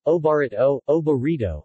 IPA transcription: obaˈreidoŋ